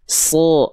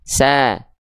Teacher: Huruf shad itu ketika fathah justru terdengar seperti vokal O. So, seperti bukan betul-betul vokal O, tapi seperti vokal O.